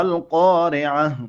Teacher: وقف په حالات کې د تای مدوره په هی باندې بدلیږي. ما القارعة بیا به هی ښکاره کوئ، داسې به نه وایي ما القارعة، ما القارعة داسې به وایي.